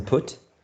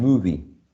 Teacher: the short lax U as in put, and then the long and tense U as in movie